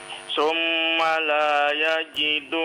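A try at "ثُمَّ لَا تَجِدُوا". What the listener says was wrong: Hurufnya ta, bukan ya. Titiknya di atas 2, bukan di bawah 2 ya.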